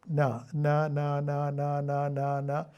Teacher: പല്ലിന്റെ പുറകിലുള്ള മോണയിലാണ് ചെന്ന് തൊടുന്നത്